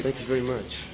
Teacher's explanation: there's some of that characteristic almost stereotypical nasality